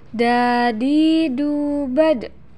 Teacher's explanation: Keluar dengan cara menyentuhkan ujung lidah ke gusi bagian atas. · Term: huruf da